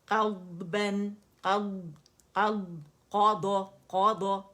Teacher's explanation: قا موٹا ہے داد اور بھی موٹا ہے مزید